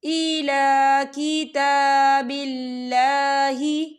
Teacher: اللہ کا نام جو ہے باریک پڑھا جائے گا، کیونکہ اللہ کے نام سے پہلے زیر ہے۔